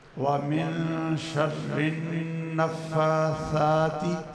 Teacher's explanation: وہ ثا ہے، اس میں سیٹی کی آواز نہیں آتی